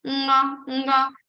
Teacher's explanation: So say nga, nga. You are having some vibrations in your throat, also some vibrations in your nose. · The place of Kavarga is Kantha, of course, throat. Along with throat, you also need some vibration in your nose. So nose will be also used to pronounce nga. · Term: nasal consonant